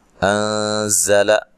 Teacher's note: زا کو زور سے ادا کرنا ہے، سختی سے ادا کرنا ہے، اور سیٹی سے ادا کرنا ہے